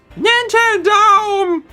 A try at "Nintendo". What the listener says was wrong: Lower, slightly lower.